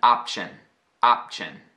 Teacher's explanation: I'm almost saying the P, ending the mouth as if I were about to say the P, but then going right in the shin.